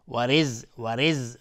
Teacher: را ترقیق است چون کسره داره